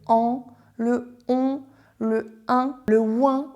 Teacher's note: ils passent à la fois par la bouche mais ils ont une résonance dans le nez · donc là il y a une petite résonance au niveau du nez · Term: sons voyelles qui passent par le nez